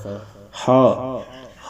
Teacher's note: اسی کے ساتھ جیم کے بعد ہا اپنے حلق سے باریک کر کے تھوڑا سا ہا کو آپ نے ادا کرنا ہے